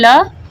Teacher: ल पार्श्विक व्यंजन जिसके उच्चारण में हवा जीभ के पास अर्थात बगल से निकलती है